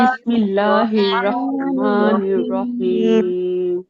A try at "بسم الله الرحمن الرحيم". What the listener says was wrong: আচ্ছা আপনার বিসমিল্লাহ পড়ার সময় বিসমিল্লাহির এই হাটা গিয়ে রকে টাচ করে না দুইটা আলাদা হয়ে যায় বিসমিল্লাহির রহমান এরকম হয়ে যায় হাটা স্পষ্ট রকে ধরবে বিসমিল্লাহির রহমানির রহিম যে জায়গাগুলো ভুল ধরা হয় ওগুলো উচ্চারণ করার সময় বিশেষ খেয়াল করে উচ্চারণ করতে হয় যাতে একদম